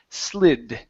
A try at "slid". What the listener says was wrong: Okay, now instead of saying slid with a Z sound, it's an unvoiced S. Slid.